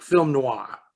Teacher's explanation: you get noir where you're not really biting that r but it's like film noir like you're you're letting the the